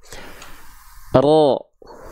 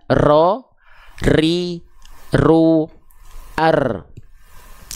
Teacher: Takrir itu bergetar ya lidah kita, tapi bukan dengan getaran yang berlebihan.